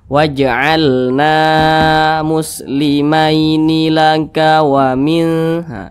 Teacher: Ini huruf alif, ini huruf nun berbaris ke atas, maka huruf nun dibaca panjang. Namanya mad tabi'i, panjangnya 2 harokat atau kira-kira 2 ketukan.